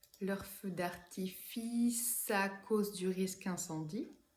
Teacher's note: je vais avoir un autre enchaînement consonantique entre artifice et à cause